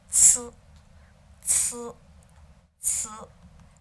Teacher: So rather than a DZ, it's more like a TS. You start making a kind of T sound, but then you add that sibilant sound to it.